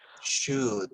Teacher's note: No pronunciamos la letra L. No la pronunciamos. Es muda.